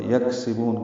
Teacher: کاف ساکن پہ ہمس ہوگا، با کو لمبا کریں گے اور وقف المد عارض للسکون ہے۔